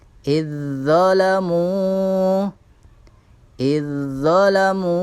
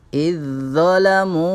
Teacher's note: Zalnya berharokat sukun, dha-nya berharokat fathah. Maka huruf zal di sini dimasukkan pada huruf dha dan seolah-olah huruf dha-nya berharokat tasydid